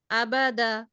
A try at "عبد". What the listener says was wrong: عبد عين উচ্চারণটা সুন্দর হবে। তবে আপুর আইন উচ্চারণের প্রতি আরো খেয়াল হতে হবে, খেয়াল করতে হবে।